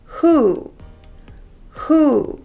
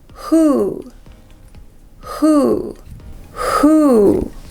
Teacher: And we want to shape the sound into an oo sound with lots of air coming through.